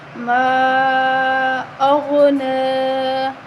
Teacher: ما پہ الف پہ چھوٹی مد ہے تو ہم اس کو 3 الف کے برابر لمبا کریں گے · اب غین جو ہے حروف مستعلیہ ہے، موٹا حروف ہے تو ہم غین کو موٹا پڑھیں گے۔ نون کے اوپر کھڑی زبر ہے تو ہم اس کو 1 الف کے برابر لمبا کریں گے۔